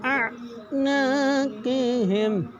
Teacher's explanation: قوف کو ہر حالت میں پر یعنی موٹا پڑھیں گے · ساکن حروف، ساکن حروف اپنے سے پہلے متحرک حروف کے ساتھ مل کے پڑھا جاتا ہے، اور حمزہ پہ زبر ہے تو آواز اٹھا کے پڑھیں گے آ، اور آگے نون پہ الف مدہ ایک الف دو حرکات کے برابر کھینچ کے پڑھیں گے